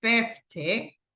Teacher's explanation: in the case of 50, this one right here, 50, the stress goes in the first syllable